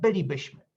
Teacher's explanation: It is pronounced with the stress on the first syllable in this case